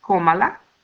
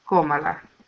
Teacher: the stress gets carried even though we add the pronouns. Now we need to comply with the fourth rule of stress that says that if the stress is in the third or the last syllable, we need a tilde, cómala.